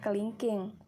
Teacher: Lambang fonetis yang kedua adalah I besar. Bunyi depannya itu tinggi, terbuka, dan tidak bulat